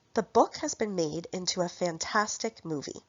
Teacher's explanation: The words book, made, fantastic, and movie are stressed because they are content words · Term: sentence stress